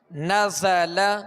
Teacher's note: زا کے اندر سیٹی کی آواز ہے، اس میں سختی ہے، تو اس کے اندر سختی اور سیٹی کی آواز جو ہے یہ اس کی خوبی ہے.